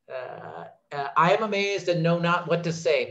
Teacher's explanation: So Shakespeare puts it into a position in the line where there's an unstressed syllable. And mazed, the stressed part of that 2-syllable word, comes at a point of stress in the line. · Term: iambic pentameter